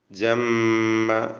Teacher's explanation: ജമ്മ മീം മുശദ്ദദ, ശദ്ദുള്ള മീമിനെ മണിച്ചുകൊണ്ട് ഉച്ചരിക്കണം.